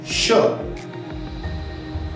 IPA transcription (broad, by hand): ʃ